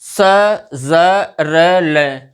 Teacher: स, ज, र, ल, इनका उच्चारण दंत मूल से होता है। मतलब हमारी जो जीभ है वो मसूढ़ों को स्पर्श करके उच्चारित होते हैं वर्ण, इसीलिए इनको हम वर्ष वर्ण कहते हैं।